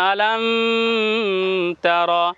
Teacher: তা নিয়েছি উচ্চারণ কেমন হবে আ লাম তা র তা র এইখানে গুন্না হবে না মিমে জজমের পরে তা আছে